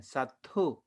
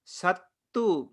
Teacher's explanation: Mahapranatha and Alpapranatha is the difference between Sattu and Satthu. Sattu means enemy and Satthu means teacher.